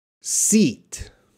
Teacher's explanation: look how my mouth spreads out it's a long it's a long sound